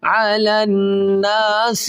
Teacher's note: لام کو اس نون کے ساتھ ملائیں گے اور نون مشدد ہے، اس کے اندر ہمیشہ غنہ کیا جائے گا